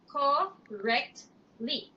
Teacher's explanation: there's no extra vowel sound in between the letter T and the letter L. So it's just three syllables.